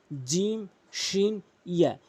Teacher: শিনটি জিম শিন ইয়া বলেছি জিহ্বার মাঝখান উপরের তালুর সঙ্গে লাগিয়ে উচ্চারণ হয় শিন। জিম শিন আর হচ্ছে ইয়া, জিম শিন ইয়া।